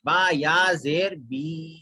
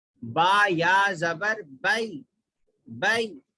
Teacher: با یا زیر بی کھینچ کے پڑھنا ہے, با یا زبر بئی جلدی پڑھنا ہے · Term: یا لین